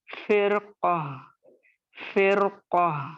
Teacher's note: قاف موٹا ہے تو را کو موٹا پڑھیں گے